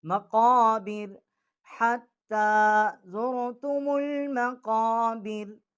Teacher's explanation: और ये काफ जो है ये बड़ा काफ है, ये मुंह के दरमियान से इसका मखरज है, ये मुंह पुर करके मोटी आवाज़ करके पढ़ेंगे। कव्वे के मुतसिल जब ज़बान जो है ऊपर वाले तालु से टकराएगी तो वहाँ से ये इसका मखरज जो है क़ाफ का है